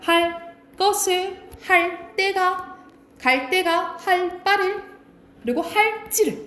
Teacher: 이 리을 뒤에 바다사자가 된 소리가 난다라고 보시면 돼요.